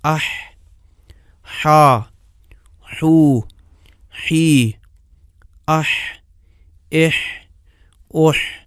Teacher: حرف حا میں زبان کا وہ انتہائی حصہ جو غذا کو سانس والی نالی میں جانے سے روکتا ہے، تھوڑا سا پیچھے کو جاتا ہے۔ اس قدر پیچھے نہیں جاتا کہ جس مقدار میں عین کے لیے پیچھے جاتا ہے۔ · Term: حا کا مخرج